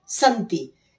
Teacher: जैसे बीच में ये संति शब्द है एक, तो इसमें समधंती, सम ये अनुस्वार जो आया है म, वो त, चूंकि त वर्ग का अंतिम अक्षर क्या होता है, त थ द ध न, तो ये म जो था वो न में बदल गया मिलाने पर